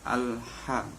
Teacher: Ayat kedua alham, al, di situ terdapat hukum bacaan alif lam qamariyah karena huruf alif lam bertemu dengan huruf ha yang termasuk huruf al-qamariyah. Cara membacanya jelas, dibaca al-ham.